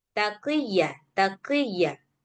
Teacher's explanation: Nah, ini ketika posisi kasrah. Kalau kasrah yang qof dia tetap tebal tapi enggak setebal ketika qof posisinya fathah ataupun damah.